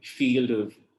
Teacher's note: It's consonant to vowel linking, field of, and so on.